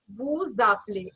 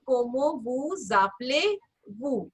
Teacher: here the last letter of the previous word is S, so this will become vu zaple